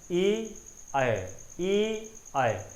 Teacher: कंठ से ध्वनि निकल के आपकी जीभ कहाँ, थोड़ी सी तालु के पास जा रही है, तो ये क्या हो जाएगा, आपका कंठ तालव्य, इसका उच्चारण स्थान हो जाएगा।